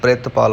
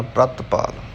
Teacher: ਪੱਪੇ ਨੂੰ ਅੱਧਾ ਬੋਲਣਾ ਹੈ, ਪੱਪੇ ਦੇ ਪੈਰ ਵਿੱਚ ਰਾਰਾ ਹੈ, ਰਾਰੇ ਨੂੰ ਪੂਰਾ ਬੋਲਣਾ ਹੈ।